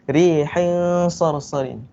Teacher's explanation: Di antara jelas dan memasukkan. Jadi dia dengung sikit. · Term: ikhfa hakiki